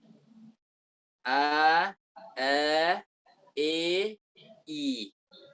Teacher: jadi antar fathah dan kasrah ini ada namanya imalah